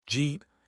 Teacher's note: When a D sound meets a Y sound, they fuse together to make a J sound. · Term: assimilation